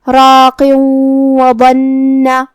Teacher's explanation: اگر ہم یہ کلمہ کو دوسری والی آیت کے ساتھ ملا کے پڑھے تو حرف الواو کلمت وبنہ میں حروف الادغام بغنہ میں سے ہے اور ادغام کا معنی ہے حرف کو حرف میں داخل کرنا. لہذا ہم یہ تنوین کو واو میں ملا کے غنہ اور تشدید کے ساتھ یہ حکم کو ادا کریں گے